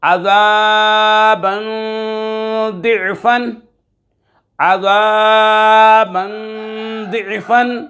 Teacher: عذابا ضعفا، عذابا ضعفا، 2 زبر کی تنوین کے بعد ضاد حروف اخفا میں سے آ رہا ہے، یہاں پر غنہ کریں گے، اخفا کر کے پڑھیں گے۔